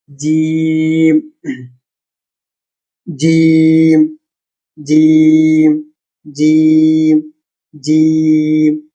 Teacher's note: জিম হলো আমাদের বাংলা বর্গীয় জ এর মতো, কিন্তু গভীর থেকে আসে। মুখের মাঝামাঝি অংশ দিয়ে এই শব্দটি বের হয়।